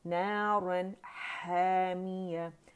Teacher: نارن، رن کیوں پڑھیں؟ کیونکہ آگے حروف حلقی میں سے ح آ رہا ہے، مڈل تھروٹ کا لیٹر آ رہا ہے، تو اس لیے نون کا اظہار ہوگا، کمپلیٹ 1 کاؤنٹ کے لیے اس کے مخرج پہ جائیں گے، ٹھیک۔